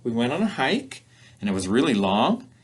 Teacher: some speakers of English will use this rising intonation pattern when telling a story or in conversation as if to let the listener know I'm not finished yet · that rising intonation pattern there lets the listener know you can't interrupt yet, the story's not finished.